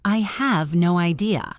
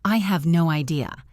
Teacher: Emphasize the word no.